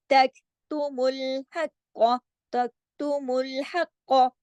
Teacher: वह तक्तुमुल हक़, अब देखिए तक, वह तक, काफ जो है बारीक भी है, फिर ये वाला जो ये जो काफ है जिस पे जजम लगी है, तक बारीक पढ़ना है इसको, और जमाओं के साथ पढ़ना है, हिलाना नहीं इसको